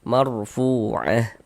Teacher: Sehingganya fu kita baca panjang. Mad tabi'i panjang 2 harakat sesuai dengan rumus 2 yang warna hitam.